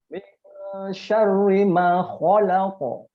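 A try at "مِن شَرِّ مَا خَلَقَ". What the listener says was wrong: Nah, jadi tebalnya itu yang khalaq, khalaq. Bacaan tebalnya bukan khalaq, tapi hanya di mulut. Kho. Jangan hadirkan hidung itu untuk tebal, tidak ya. Khalaq, salah. Kho.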